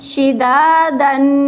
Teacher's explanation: तो दो ज़बर जहाँ आती है उसके अलिफ को नहीं पढ़ते बल्कि सिर्फ तनवीन के ऊपर गुन्ना करते हैं।